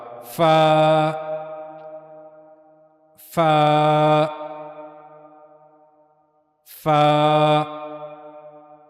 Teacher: اوپر کے اگلے دو دانتوں کے کنارے نیچے کے ہونٹ کے اندرونی حصے کو چھوتے ہیں